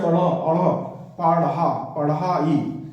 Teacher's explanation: तो पेड़, या फिर पढ़ाई वाला, कढ़ाई या पढ़ाई जब आप बोलोगे तो ये पढ़ाई, अड़ा बोलोगे जैसे अड़ अड़, पढ़ा पढ़ाई, तो इस शब्द का जब उच्चारण करोगे तो झटके के साथ नीचे जीभ गिरेगी। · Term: उत्क्षिप्त वर्ण